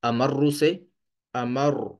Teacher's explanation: تو شد کی وجہ سے اس حرف پر ہم تھوڑا سختی سے وقف کریں گے، مطلب سخت الفاظ آواز کے ساتھ یہاں پہ رکیں گے، جیسا کہ امر سے امر اس طرح سے پڑھیں گے، ٹھیک ہے۔ امر، را کو تھوڑا سختی کے ساتھ جو ہے وہ ادا کریں گے شد کی بنا پر۔ تو اب یہاں پہ غلطی کیا کرتے ہیں، امرو پر وقف کرتے ہیں امر اس طرح سے، اور ہم کس طرح سے کر دیتے ہیں غلط طریقے سے، امر امر اس طرح۔